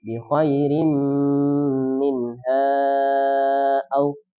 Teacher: tanwin ketemu mim termasuk huruf idgham digunnah, maka diidghamkan, dimasukkan, kemudian digunnahkan. Bi khairin menjadi bi khairim, kemudian ditahan, digunnahkan bi khairim minha au.